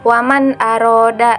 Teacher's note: bunyi nun sukun atau tanwin nya harus dibaca dengan jelas tanpa mendengung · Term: izhar halqi